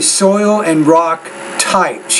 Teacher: you need to pronounce that T with a little more air